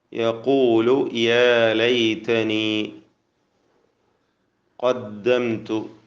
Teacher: 2 ഖാഫുകളും തഫ്ഖീം ചെയ്ത് ഉച്ചരിക്കുക എന്നത് പ്രത്യേകം ശ്രദ്ധിക്കുക.